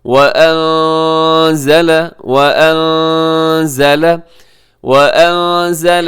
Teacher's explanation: یہاں نون ساکن کی بعد زا یہاں اخفا کیجیے گا